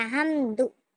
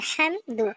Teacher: जैसे कोई हमदो नहीं करेगा या बा दो नहीं पढ़ेगा या ना बो नहीं पढ़ेगा। जब दोनों होठों को गोल कर देंगे और पेश की आवाज आगे को जाएगी।